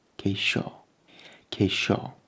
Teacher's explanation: that IO does not create a yo at the end. It creates sho.